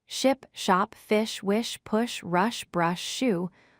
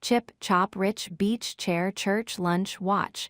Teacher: sh equals smooth airflow with rounded lips. CH equals sharp burst with spread lips.